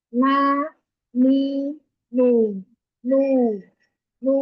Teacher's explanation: Kalau nun dan mim yang gunnah hanya N-nya saja atau nunnya saja dan mimnya saja. Untuk harokatnya dia sudah bersih dari gunnah, baik dia berharokat fathah, kasroh maupun dhammah.